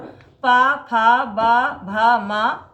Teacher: प वर्ग में ओठ का ओठ से स्पर्श होता है।